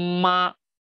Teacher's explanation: 这个唇嘴唇要相互触碰一下，这个字头才会有力度啊